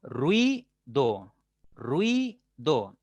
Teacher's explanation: Ruido, ruido, 2 sílabas. La I suena un poco más fuerte que la U, entonces sería esa el núcleo.